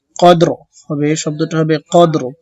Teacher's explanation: অকফের সময় র সাকিন করতে হবে কদর হবে শব্দটা হবে কদর প্রথম দালে খলকল হবে পরে রটা আস্তে উঠবে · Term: কলকলা